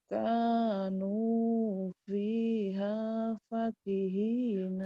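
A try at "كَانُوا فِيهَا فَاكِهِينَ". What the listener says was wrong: fa-nya panjang.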